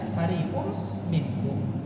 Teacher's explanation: Huruf ra ketika dia kasrah dia tipis. Jangan dibaca nabadahu fari ri.